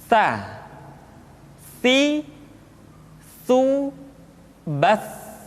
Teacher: Sa dikeluarkan dengan menyentuhkan ujung lidah kita dengan dinding dua gigi seri bagian atas. Diucapkan dengan suara dan nafas yang terdengar mengalir. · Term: huruf sa